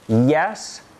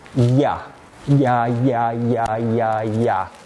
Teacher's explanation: it's non nasal it is voiced we say it's palatal because the tongue is moving towards the hard palate